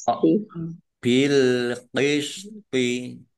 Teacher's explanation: Toknya ya agak berat ya. Jangan sama dengan tak.